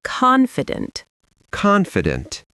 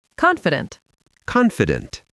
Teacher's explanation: Some learners say confident with the stress at the end, but in American English, the stress is at the beginning.